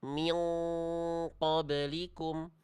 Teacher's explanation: ikhfa hakiki itu yang dibaca mendekati bunyi eng